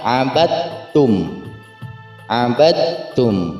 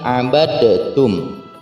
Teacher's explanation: Itu hukum tajwidnya menjadi idgham mutajanisain, yakni pertemuan antara huruf dal dan huruf ta. Artinya huruf dalnya dihilangkan dan dimasukkan ke huruf ta, seolah-olah huruf taknya berharokat tasydid